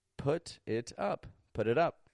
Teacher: if you don't know about the FL flap T linking then that put it up might sound like it's all one big word